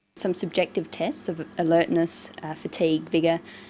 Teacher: So she uses a variety of intonation. She uses rising and falling tones, and a tone that's neither rising nor falling